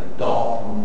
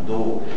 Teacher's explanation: a palavra dó pronuncia-se com o aberto